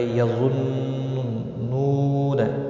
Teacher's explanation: یظنون، ظا حروف مستعلیہ میں سے پر پڑھا جائے گا، نون مشدد پر غنہ ہوگا، واو مدہ ہے، ایک الف کے برابر کھینچ کر پڑھیں گے، اور وقف کی صورت میں نون ساکن پڑھا جائے گا، وقف بالاسکان ہوگا، مد العارض وقفی ہوگا، 3 سے 5 سیکنڈ لمبا کر کے آپ وقف کر سکتے ہیں۔